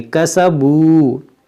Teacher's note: مما کسبو، یہاں پر واو مدہ ہے، اس کو بھی کھینچیں گے